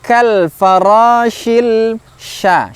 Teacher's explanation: huruf sya makhrajnya adalah tengah lidah ke langit-langit